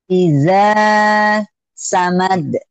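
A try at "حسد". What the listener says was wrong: Bukan samad, hasad Hasad ada e-nya ya.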